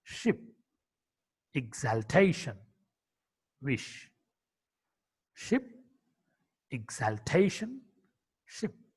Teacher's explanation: Sh. Sh is a voiceless palato-alveolar fricative consonant.